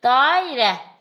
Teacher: a i arasına y əlavə olunacaq · Dairə sözündə birinci hecadakı a uzun tələffüz olunur.